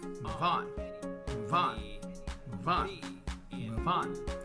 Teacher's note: The V in move connects to the O in on, forming move on, move on, move on, move on. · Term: connected speech